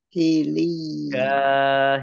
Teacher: Jim fathah alif mat tobi'i, 2 harokat. Ya tasdid yang didahului dengan harokat kasroh namanya mat tamkin, dibaca ditahan 2 harokat.